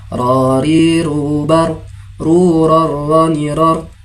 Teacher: makharijul hurufnya berada pada ujung lidah berikut gigi seri yang sejajar hampir mendekati makhraj atau tempat keluarnya huruf nun. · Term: huruf ro